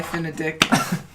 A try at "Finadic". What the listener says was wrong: That's not how it's pronounced. No, you don't emphasize the dick. It's like one word.